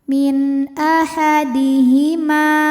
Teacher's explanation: Lalu ada hukum izhar syaf izhar halqi ya karena nun sukun menghadapi huruf halqi atau huruf tenggorokan yaitu hamzah maka nunnya dibunyikan dengan jelas